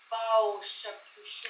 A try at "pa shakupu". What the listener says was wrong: Ah, il n'y a pas de pao. C'est pas un préfixe. Pa shakupu.